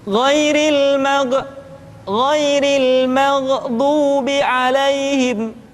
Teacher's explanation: Kalimat maghdu yang semestinya tidak mantul sering dibaca dengan mantul